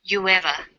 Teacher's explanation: U ends with oo, a high back vowel, so it links with linking type 2, the w sound. It becomes you ever.